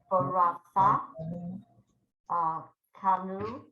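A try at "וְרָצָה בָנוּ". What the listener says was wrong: First letter's wrong.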